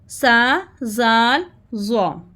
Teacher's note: तो हमने जो है ना अपनी जो हमारी टंग है, टंग comes slightly out between the teeth and the sound is soft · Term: सॉफ्ट लहजे